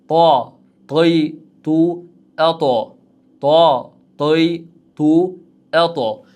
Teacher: To harfimizning mahraji ham dal, ta harflari kabi tilimizdan uchi yuqori old tishlarning tubiga tegishligi bilan chiqadi. Faqatgina to harfimiz nima bu joyda yo'g'on talaffuz bo'ladigan harf va tebranadigan harf.